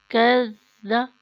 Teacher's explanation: زبان اوپر والے دانتوں کے کنارے پہ روکیں، سیٹی کی آواز نہ آئے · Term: زال